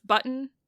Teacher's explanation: And so that's something that phonologists or phoneticians, whatever, people who study sounds, call a syllabic N, because it's an N that is being a syllable all by itself with no vowel